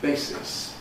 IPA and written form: ˈbeɪsɪs (basis)